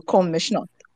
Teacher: R and the S become a sh sound